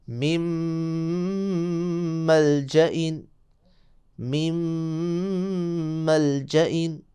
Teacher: اس طرح من ملجئن، من علیحدہ، ملجا علیحدہ. نون ساکنہ کے بعد ملجا لفظ آیا اور میم یرملون میں سے آئی تو یہاں بھی ادغام ہوگا، نون چھپ جائے گی میم میں اور ادغام مع الغنہ ہوگا